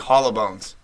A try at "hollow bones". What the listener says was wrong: Sounds like you're saying it in one word, like hollow bones.